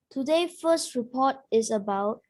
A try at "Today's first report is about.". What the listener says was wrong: Get the S on there.